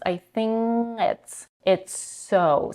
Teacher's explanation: She's dropping the final consonant in the word think. She's merging it with the next sound.